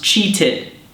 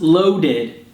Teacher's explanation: when a verb ends in a T or a D sound already, it has an extra id sound.